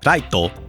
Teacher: the Japanese language doesn't really have a soft R sound, it's hard like an L.